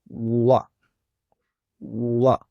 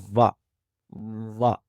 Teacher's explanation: होठों को गोल करेंगे और हरफ वाव की आवाज को अदा करेंगे